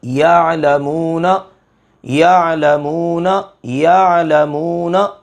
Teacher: آپ نے عین کو حلق کے درمیان میں سے ادا کرنا ہے، حلق کے درمیان میں سے، اوپر سے نہیں، اور اس میں جھٹکا نہیں دینا · عین کی آواز کے اندر قدر نرمی ہوگی اور وہ بغیر جھٹکے کے ادا ہوگی۔